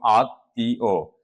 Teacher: ময়ের উচ্চারণের কারণে শব্দের উচ্চারণে দ্বিত্ব হয়েছে